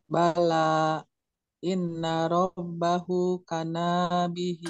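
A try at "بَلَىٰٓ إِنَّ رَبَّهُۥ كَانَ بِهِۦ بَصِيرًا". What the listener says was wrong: Kana bihi. Hanya panjang.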